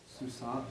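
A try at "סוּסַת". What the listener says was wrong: Okay, susat should be susat. The comment should be a pathek because the construct form has a pathek, not a comets. Susat, the first one on the left, should be susat with the pathek, or you could have chosen to change it to susa, a normal feminine absolute form.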